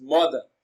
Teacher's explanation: mother receives the stress on its first syllable